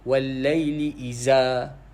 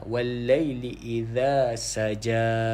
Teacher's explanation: Dia bukan iza, dia idza. Kita gigit sedikit lidah tu. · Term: zal